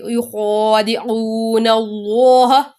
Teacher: اب اللہ تعالیٰ کے نام سے پہلے زبر آ رہی ہے تو اس کو ہم پور پڑھیں گے